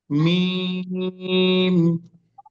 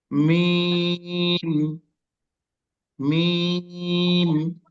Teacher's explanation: মিমের উচ্চারণ হচ্ছে এই উভয় ঠোঁটের শুকনো জায়গা, উভয় ঠোঁটের শুকনো জায়গা।